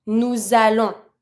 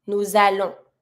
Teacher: Starting with a vowel, I link with my S from nous.